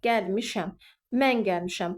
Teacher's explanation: Bu şəxs sonluğu vurğu qəbul eləmədiyi üçün vurğu dərhal miş, yəni ikinci hecanın üzərinə keçir.